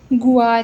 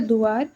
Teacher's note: फिर देखिए अंतस्थ व्यंजन य और व यदि किसी संयुक्त व्यंजन के साथ संयुक्त रूप से जुड़े हों तो अवधि में य के स्थान पर या व के स्थान पर उआ परिवर्तन देखा जाता है